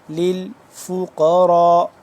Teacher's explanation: قاف موٹا کر کے پڑھیں گے، را کو موٹا کر کے پر کر کے، اور را الف مد زبر را 4 سے 5 الف کے برابر یہ مد لمبا ہوتی ہے۔